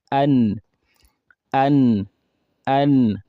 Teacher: the tip of the tongue touching the gum behind the two front teeth, two front incisors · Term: nun